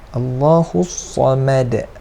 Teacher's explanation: Hu ni jangan kita tebalkan lah, jangan kita Allahus Samad. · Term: Hu ni nipis